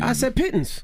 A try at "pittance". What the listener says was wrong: No, I think you pronounced it the way it's spelled.